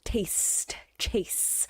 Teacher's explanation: you have that more elongated sound there at the end with those s sounds